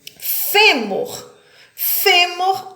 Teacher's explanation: que a antepenúltima sílaba é a mais forte elas são acentuadas fêmur fêmur a sílaba tônica é o fé